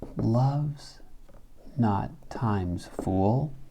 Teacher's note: One of the obvious variants is the trochaic inversion at the front of the line. Shakespeare will often use a trochee on the first foot to create a strong, weak, weak, strong sound before the caesura. So you get a dun, dun, dun, dun sound.